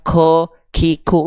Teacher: Kaf itu punya aliran nafas